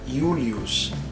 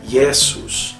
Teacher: O mesmíssimo fonema de I, porém sempre como semivogal. Então sempre será utilizado num ditongo e terá o valor de semivogal.